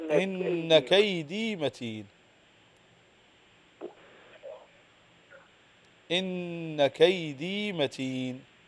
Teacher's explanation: نون مشدده تغن بمقدار حركتين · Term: النون مشددة